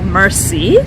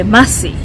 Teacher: that is the American way, the R pronounced very well